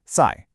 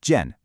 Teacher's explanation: we use two sharp falling fourth tones